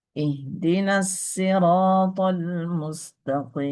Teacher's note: Kumbul membaca lafal as-sirata dengan sin, bisin.